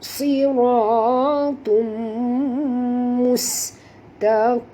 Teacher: Tanwin baris 2 hadapan bertemu dengan mim, maka masukkan bunyi tanwin ini ke dalam mim 100% dengan dengung. Dengung 2 harakat.